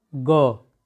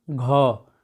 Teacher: ग, जो आपका ग है, यह भी क्या है? इसमें कम वायु निकल रही है। हम घा बोलेंगे घ, इसमें अधिक वायु निकल रही है।